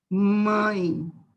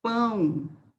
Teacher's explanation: o nasal ele sai por onde fossas nasais pelo nariz